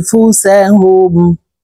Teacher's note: আং ইকফা গুন্না নুন সাকিনের পরে ইকফার হরফ ফা আসছে তো এই নুনকে নাকের ভিতরে লুকাইয়া গুন্নার সহিত পড়ব